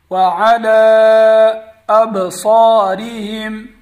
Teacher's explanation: وعلى أبصارهم با پر قلقلہ ہوگا اور صاد کو ہم پر پڑھیں گے. صاد پر زبر ہے اس کے بعد الف ہے اس لیے صاد کو ایک الف کی مقدار لمبا کر کے پڑھیں گے